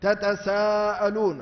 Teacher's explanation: ثم إن التاء والسين يتفقان في أنهما من حروف الهمس ومن حروف الإصمات